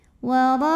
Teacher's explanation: Hamzahnya yang i pada kata waraikum. Maka ra dipanjangkan boleh 4 boleh 5 harokat. Waraikum. Kumnya pendek ya. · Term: mad wajib muttasil